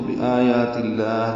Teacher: تا کو لام سے ملا دیں گے تو بآیات اللہ، لام اس میں جلالا تا کی زیر کی وجہ سے باریک پڑا جائے گا، 2 حرکات لمبا کریں گے، ہاں سے حلق سے نکالیں گے.